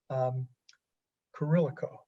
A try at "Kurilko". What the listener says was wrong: Everybody always messes up the I now.